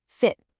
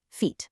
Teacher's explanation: You've got the quick, relaxed silver sound in fit, and then the long, tense green sound in feet.